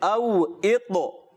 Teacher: عین کی آواز یہاں ہے ہی نہیں